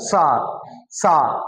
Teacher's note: सा जब बोलोगे तो जीभ जो है वो वायु को रोकती है कि भाई धीरे धीरे जा, तो वहां पे घर्षण होता है। सा सा बोल रहे हैं।